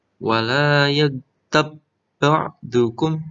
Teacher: Tabnya tidak kol-kolah ya. Ada ba sukun tetapi karena bertemu dengan ba maka dibaca idgham mutamasilain.